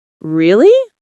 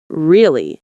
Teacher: with a rising tone, it means surprise. When they say, Really? with a flat tone, it means confirmation.